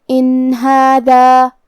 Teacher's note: کلمت ہادہ ہا پہ کھڑا زبر ہے تو یہاں مد الف ہے، ہم اپنی آواز 2 مد کے برابر لمبی کریں گے · کلمت ہادہ میں ہا حروف الابہار میں سے ہے اور ابہار کا معنی ہے ظاہر کرنا، تو ہم یہاں نون ساکن ظاہر کریں گے اور بغیر غنہ سے یہ حکم کو ادا کریں گے